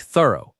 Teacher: Two syllables and the ending is soft, not a hard f sound.